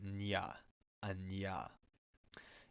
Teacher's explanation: If it's followed by enge, then it's a voiced alveolar nasal followed by the voiced palatal approximant, like nya, a nya.